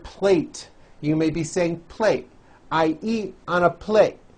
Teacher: and you don't hear the T sound